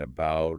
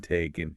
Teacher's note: the unstressed ones, they get reduced, they become quick, quiet, and often turn into that very common lazy sound called a schwa. The all sound.